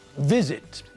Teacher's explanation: visit has got two syllables but again the stress is on the first part of the word not the last part